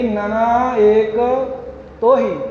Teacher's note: ਨਨਾ ਪਾਠ ਪੋਲਾ ਹੀ ਬੋਲਣਾ, ਨੰਨਾ ਟਿੱਪੀ ਨਹੀਂ ਲੱਗਣ ਦੇਣੀ